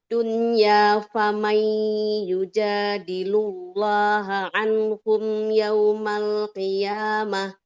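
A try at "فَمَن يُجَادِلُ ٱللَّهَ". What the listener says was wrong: Jangan famai yujadilullah. Jadi lamnya tipis ya. Yujadilullah. Allah. Faman yujadilullah anhum yaumal qiyamah.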